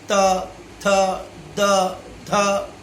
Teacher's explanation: दांत की सहायता से उच्चारण होता है। आपकी जिह्वा जब दांत को स्पर्श करती है तब ये सब वर्ण का उच्चारण होता है